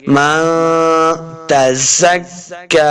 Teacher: نون ساکن کے بعد تا جو ہے یہ حروف اخفا سے آ گیا، تو یہاں پہ اخفا کا قاعدہ ہے یعنی غنہ کر کے پڑھیں گے